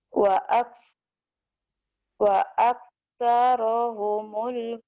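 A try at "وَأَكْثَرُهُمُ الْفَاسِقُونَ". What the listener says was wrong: Wa aksaru ru, bukan ro tapi ru itu nenek. Wa aksaruhum.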